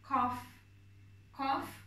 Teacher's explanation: Kaf harfi yine boğaz sıkılarak söyleniyor. Tok ve kalın bir şekilde söyleyeceksiniz. Ayrıca biraz yine gırtlağı zorlamanız gerekiyor bu harfi söylerken.